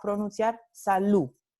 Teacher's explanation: Omisión o elisión de la D final.